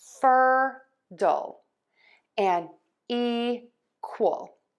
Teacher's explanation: we are going to stress syllable one in both of these root words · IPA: /ˈfɜrtəl/